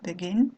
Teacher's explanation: vous allez prononcer begin, et l'accent tonique tombe sur la dernière syllabe